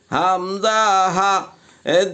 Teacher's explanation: 1 নম্বর মাখরাজ হলকের শুরু হইতে হামজা হা